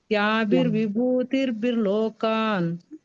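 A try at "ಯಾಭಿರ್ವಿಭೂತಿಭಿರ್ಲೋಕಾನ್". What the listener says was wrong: ಇಲ್ಲಿ ಯಾಭಿರ್ ವಿಭೂತಿಭಿಹಿ ಮತ್ತೆ ತಿರ್ಭಿ ಅಂತ ಇಲ್ಲ, ಅಲ್ಲಿ ಅರ್ಕವಳಿ ಇಲ್ಲ ಬಕ್ಕೆ ಅಲ್ಲ ಮಾತಾಜಿ. ಯಾಭಿರ್ ವಿಭೂತಿಭಿಹಿ ಲೋಕಾನ್. ಮತ್ತೆ ಬಿರ್ಲೋಕಾನ್ ಯಾಕೆ ಹೇಳ್ತೀರಾ? ಅಲ್ಲಿ ವಿಭೂತಿಭಿಹಿ ವರ್ಗು ನಿಲ್ಲೋದು ಅಲ್ಲ. ಯಾಭಿರ್ ವಿಭೂತಿಭಿಹಿ ನಿಂತು ಮತ್ತೆ ಲೋಕಾನ್ ಅಂತ ಹೇಳ್ಬೇಕು.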